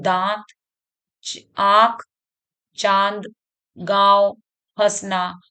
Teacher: है इसमें नाक से एकदम नाक से भी बोला जाता है मतलब हम मुख से तो बोल ही रहे हैं नाक भी हमारी बोलेगी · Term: अनुनासिक